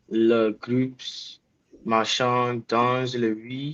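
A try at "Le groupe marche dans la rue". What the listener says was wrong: Why did you say groups? It's not English. It can't be groupé because there's no accent on the E.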